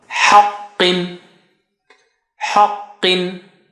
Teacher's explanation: Ha is low, qa is high sounding.